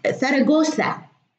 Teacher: في اللغة الإسبانية الزي تنطق ثا